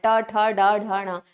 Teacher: जीभ जो है वो हमारा उल्टा हो रहा है। तभी हम बोल पा रहे हैं। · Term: मूर्धन्य